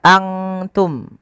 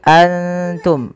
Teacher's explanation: Apabila ikhfa itu terjadi apabila ada nun sukun atau tanwin bertemu dengan salah satu huruf ikhfa, di antaranya adalah huruf ta. Cara membacanya, samarkan nunnya kepada makhraj daripada huruf ta. Kalau makhrajnya misalkan ta itu makhrajnya adalah perbatasan ujung sari kita, ujung lidah kita menempelkan dengan di atas itu gusi atas dan gigi sari atasnya, ya, di perbatasannya, di ujung pangkalnya.